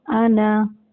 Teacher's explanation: जैसे ये पहला कलेमा है अना, लिखने की सूरत में होगा अना, ठीक है, अलिफ के साथ, लेकिन जब भी हम ये कलेमा पढ़ेंगे तो बगैर अलिफ के, इसके अलिफ की आवाज़ नहीं निकालेंगे, इसे पढ़ेंगे अना।